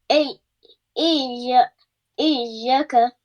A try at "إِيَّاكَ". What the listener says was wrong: No, stretch it. Alif madda.